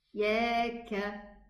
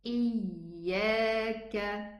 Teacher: One of the first mistakes is pressing too hard on the middle tongue, especially when it is a shadda letter